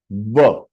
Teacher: व it is said व। You have to press your lower lip with your teeth. · व करके जो अल्फाबेट है, दैट इज दंतव्य एंड ओष्टव्य।